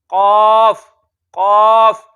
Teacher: जुबान की जड़ और तालू के नरम हिस्से से।